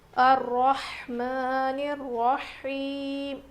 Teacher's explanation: ہا کی آواز بالکل ظاہر ہونی چاہیے، رو موٹا پڑھیں گے، کھڑا زبر ہے میم کے اوپر.